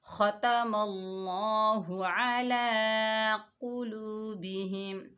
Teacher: قاف حروف مستعلیٰ میں سے، اس کی آواز موٹی ہوگی، واو ساکن سے پہلے پیش ہے، یہ واو مدہ ہے، اس کو ایک الف کی مقدار کھینچ کر پڑھیں گے۔